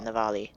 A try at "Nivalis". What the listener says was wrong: Like, no, there's an S on the end. No, there's definitely an S on the end.